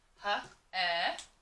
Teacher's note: In the word hello, you hear eh. You do not hear E. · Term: short E